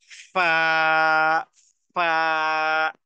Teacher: ফা হলো নিচের ঠোঁটের পেট সামনে উপরে দুই দাঁতের আগার সাথে লাগিয়ে